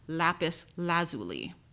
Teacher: the standard dictionaries in the United States place the stress of the second word on the first syllable